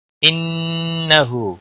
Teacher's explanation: نون مشدد پر غنہ ہوگا ، ہا کے اوپر الٹا پیش ہے، ایک الف کے برابر